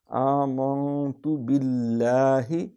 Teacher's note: کیونکہ یہ کھڑی زبر ہے، ایک الف جتنا اس کو کھینچیں گے